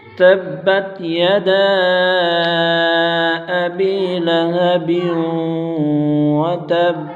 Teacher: مد منفصل ہوگی کیونکہ حروف مدہ کے بعد حمزہ دوسرے کلمے میں ہے، اسے 2 2.5 4 الف تک کھینچ کر پڑھیں گے